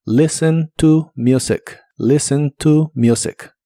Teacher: El verbo listen inglés es un verbo indirecto, así que usas la palabra tú antes de mencionar a qué o a quién escuchas, como en este caso música. La t de listen no se pronuncia y la u de la palabra music se pronuncia como you.